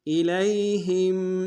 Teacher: الیہم حمزہ کو نرم سے ادا کریں گے، لام کو یا کے سامنے لانا ہے، یا الین بغیر کھینچنے پڑیں گے، ہا کو میم ساکن کے سامنے لانا ہے، میم ساکن میں غنہ کریں گے۔